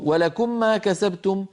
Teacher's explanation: هو أدغم الميم في الميم لكنه لم يأتي بغنتها المطولة، هذا خطأ.